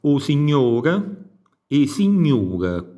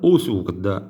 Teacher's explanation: Poi abbiamo sempre metafonia O in U, per esempio o signore e signore, quindi plurale, singolare, abbiamo un cambio interno di suono.